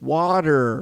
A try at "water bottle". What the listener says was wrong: Say water bottle. There's T's in it, dude. There's T's in it. Pronounce them.